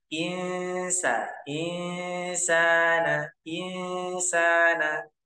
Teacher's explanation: Ikhfa atau tanwin bertemu dengan huruf ikhfa cara mengikhfakan itu yaitu dengan cara menyamarkan nun sukun ke arah huruf ikhfa setelahnya · Diikhfakan atau disamarkan ke arah huruf sin. Nah, panjangnya 2 harokat. Dan disertai dengan dengung.